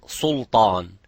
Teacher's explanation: be careful not to make the lam and the sin mufakham